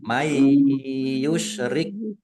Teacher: Nun sukun bertemu dengan huruf ya, bacaan idgham bi gunnah, masuk dengan mendengung.